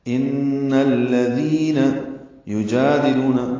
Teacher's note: ان الذین نون مشدد پہ غنہ ہے اور الذین کے لام سے ملانا ہے، دال نرمی سے پڑھنا ہے، دی یا مدہ ہے تو حرکات لمبا کرنا ہے.